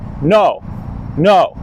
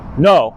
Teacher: That's fourth tone. It's just straight down. It's kind of like you're giving a decisive firm command.